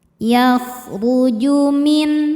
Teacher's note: Huruf ra dibaca secara tafkhim karena berharakat di atas yaitu dhommah. Cara bacanya ra dibaca tebal.